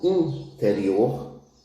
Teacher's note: O I pode ser nasalizado como interior